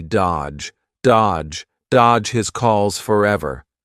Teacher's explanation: Notice here the D is silent, the middle D